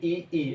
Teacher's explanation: ए और ए का उच्चारण स्थान तालु से होता है